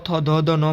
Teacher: त थ ध न बोलेंगे तो आपके दांत टकराएंगे